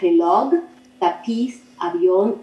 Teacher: se clasifican en palabras agudas, donde la última sílaba es tónica.